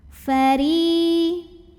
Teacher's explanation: Huruf ro dibunyikan secara tarqiq sebab ro-nya barisnya di bawah kasrah, maka bacanya tipis, pangkal lidah datar. Fari. Ri mad tabi'i zahiri karena ada ya sukun yang didahului baris kasrah, maka dibaca ro-nya panjang 2 harokat.